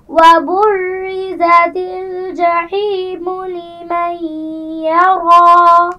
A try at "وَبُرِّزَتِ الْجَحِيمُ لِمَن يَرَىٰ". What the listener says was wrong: شاباش،